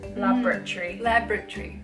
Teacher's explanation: we kind of like smoosh the middle syllable